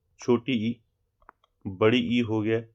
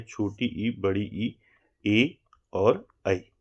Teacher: अग्रभाग से मुख्य रूप से जो है अग्र स्वर निकलते हैं। जैसे आपका ई हो गया, छोटी ई, बड़ी ई हो गया, ठीक है, छोटी ई, बड़ी ई, ए और ऐ।